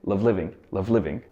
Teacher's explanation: the end of love and the beginning of living form together into one syllable